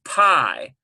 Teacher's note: we've got sort of a diphthong, A-I, and this is silent, this aleph